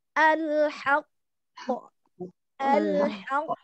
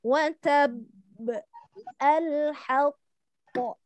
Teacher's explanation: Jadi ada kayak ada jeda saking kita nahan gitu loh Bu, karena ada 2 huruf di situ yang qalqalah sebetulnya. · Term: akbar